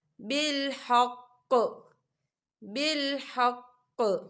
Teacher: تو وقف کی صورت میں قاف جو ہے وہ ساکن ہو جائے گا اور یہاں پر قلقلہ ہوگا